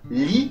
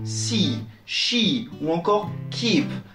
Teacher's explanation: A ne pas confondre avec le i français dans lit qui, lui, est beaucoup plus court